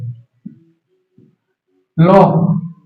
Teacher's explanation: ল যখন উচ্চারণ করি আমাদের মুখের পাশ দিয়ে বেরোচ্ছে শ্বাস বায়ুগুলো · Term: পার্শ্বিক ধ্বনি